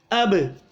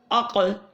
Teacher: حرکت اور جنبش دیں گے. ان حروف کو ادا کرتے وقت مخرج میں ہلکی سی جنبش پیدا ہوتی ہے، جس کی وجہ سے آواز لوٹتی ہوئی ایکو ہوتی ہے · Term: قلقلہ